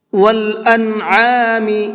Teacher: عین کو حلق سے نکال کر کے پڑھیں گے